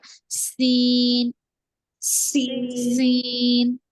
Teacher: जुबान की नोक नीचे के दांतों के अंदरूनी हिस्से को लगेगी और विजल की आवाज आएगी पढ़ते वक्त और जुबान का दरमियानी कुछ हिस्सा उप तालू को